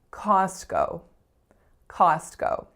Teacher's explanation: A little bit tricky, this one, because it would appear that there are 2 letter O's in this word, and there are, but each of them makes a different sound. So the sound of our first vowel is a low back ah, and that is our strongest vowel. And then the second letter O makes the sound O.